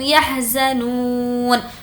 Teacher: نو کو کھینچیں گے، واو مدہ ہے اور اب ہمیں یہاں پر رکنا ہے تو نون پر جو عبارت ہے زبر اس کو ہم جزم دے دیں گے۔